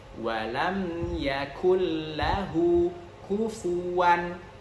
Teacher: Nun sukun bertemu dengan lam, yang mana itu sudah kita bahas di sesi tajwid bahwa di sini ada idgham tanpa gunnah. Jadi langsung masuk ke huruf lamnya.